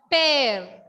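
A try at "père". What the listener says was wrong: No, there is no ear sound there, dear. Ear sound is not there.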